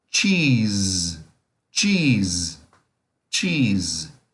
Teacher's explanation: Dois Es juntos aqui, som longo. E o S é com som de Z.